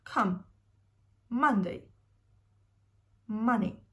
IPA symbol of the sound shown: ʌ